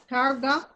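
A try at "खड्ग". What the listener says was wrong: Kharga. D, the retroflux D sounds like R, but there is no R. Kharga.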